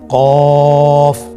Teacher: কফের মাখরাজ হলো জিহ্বার গোড়া তার বরাবর উপরে তালুর সঙ্গে লাগিয়ে উচ্চারিত হয়।